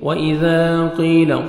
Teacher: قاف کو موٹا کر کے پڑھیں گے، یا مدہ 1 سیکنڈ آپ نے قاف کو کھینچنا ہے